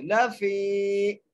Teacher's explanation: فا کو ایک الف کی مقدار کھینچ کے پڑھیں گے، لفی، کھینچ کے ایسے لفی، اور آگے ہے خسر، لفی خسر، لفی خسر۔